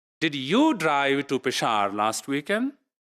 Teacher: You see, the emphasis is on you. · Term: Emphatic stress